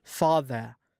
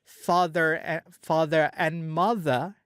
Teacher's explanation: kalau di British dia contohin father, R-nya nggak diucapin. Tapi kalau ada father and mother, dia R-nya R yang satu di father itu diucapin. Father and mother, R father-nya jadi kebaca gitu loh.